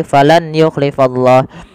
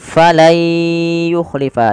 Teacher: diganti suara nunnya menjadi suara ya. Kemudian langkah kedua ditahan dengan gunah. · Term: idgham